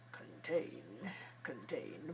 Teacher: the second syllable is stressed and long and clear, tain. The first syllable is reduced and Contain.